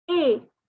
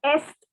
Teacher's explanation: Okay, it is not est. Again, the S is silent, the T is silent. So it is pronounced as A